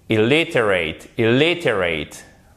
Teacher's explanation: Et du coup, en fait, et là où vous avez le piège, c'est que comme vous avez cette deuxième syllabe qui est renforcée